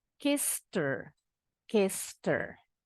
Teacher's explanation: H-nya dibuang, jadi cuma ketemu bunyi R-nya aja.